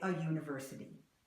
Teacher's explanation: we put a Y in there that isn't there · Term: imaginary Y